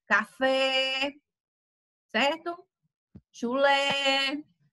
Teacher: falar trata-se de uma palavra oxítona café certo chulé então a última sílaba você vai tá falando com mais intensidade com mais força